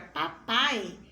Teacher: na palavra papai eu consigo pronunciar em uma única voz as letras a e i